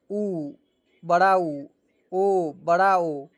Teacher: ओष्ठक को वृत्ताकार गोल करके जिन स्वर्णों का उच्चारण होता है उन्हें वृत्त मुखी या वृत्ताकार स्वर्ण कहा जाता है। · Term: वृत्त मुखी स्वर्ण